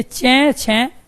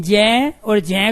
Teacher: चे छे हमने आराम से उच्चारण कर लिया, कोई गूंज नहीं है, लेकिन जय और जय को लंबा खींच रहे हैं। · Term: अघोष